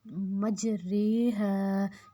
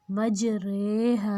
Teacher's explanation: ایک لفظ ہے سورۃ ہود میں مجریہا، جس میں ہم نے اس کے را کو ہم نے اس کے اوپر جو کھڑی زیر ہے اس کو لمبا تو کرنا ہے لیکن اس کو ری نہیں کرنا